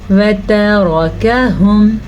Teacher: ये काफ मोटा नहीं है, ये बारीक काफ है